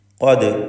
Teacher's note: ഖാഫിനെ തഫ്ഹീം ചെയ്യണം, സ്വരഭാരത്തോടെ ഉച്ചരിക്കണം. ഇസ്തിഅലാഇൻ്റെ 7 അക്ഷരങ്ങളിൽപ്പെട്ടതാണ്.